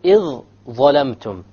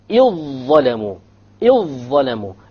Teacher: every time you have a silent dhal followed by a dha, you will merge it together